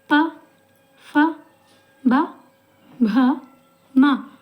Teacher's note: जब हम इन शब्दों का उच्चारण कर रहे हैं तो ये हमारे ओष्ठ, हमारे होंठों को मतलब आपस में टच कर रहे हैं। हमारा जो दबाव पड़ रहा है वो हमारे होंठों पे पड़ रहा है और वायु का प्रभाव भी उसी तरह हो रहा है कि वो हमारे ओष्ठ जो हैं उनके उस पे आकर टच करके ये अक्षरों का उच्चारण हो रहा है। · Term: प वर्ग